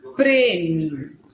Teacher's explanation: Na palavra prêmio, é a vogal E, só que fechada, um som fechado.